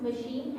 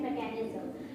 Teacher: in machine, CH sounds sh, and mechanism it sounds ka